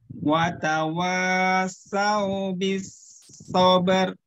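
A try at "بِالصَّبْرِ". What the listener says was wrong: Jangan sober. Jadi lidahnya langsung naik ke atas.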